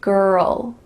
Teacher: with the L, my tongue is coming beside my teeth.